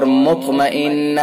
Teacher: نون حرف مشدد لہذا حرف غنہ ہوگا